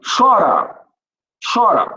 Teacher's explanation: Você viu que o mais forte é a penúltima?